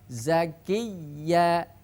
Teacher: ketika ada ya tasdid atau ya musyaddadah hendaknya suaranya ditekan tanpa dengung